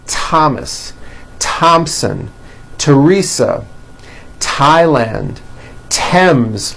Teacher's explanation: they are pronounced as if they were spelled with a normal T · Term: TH exceptions